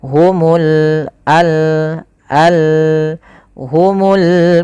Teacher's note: qamariah yaitu alif lam yang kita tulis dan kita baca dengan jelas suara lamnya